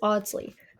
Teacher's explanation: In England, it is Audsley, non rhotic with the R dropped.